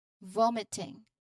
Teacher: the overall rhythm, it emphasizes the first syllable